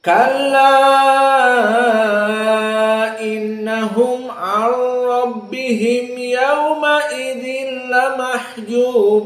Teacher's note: Kalla innahum an, di sini an masuk kepada ra menjadi idgham walau kana bila gunnah